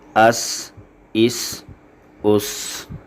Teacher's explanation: زا، سین اور صاد یہ سیٹی والے حروف ہیں، ان کو ادا کرتے ہوئے ہم سیٹی کی آواز نکالتے ہیں